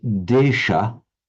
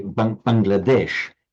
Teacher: In Sanskrit, it is desha, and as we know in the modern languages of northern India, the final ah is not pronounced. So in Sanskrit, Bangladesha, which when I say Bangladesh, it's that same desh, Bangladesh, the country of the Bengalis.